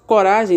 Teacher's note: a palavra tônica de coragem está no ra. Então, ela é uma palavra paroxítona.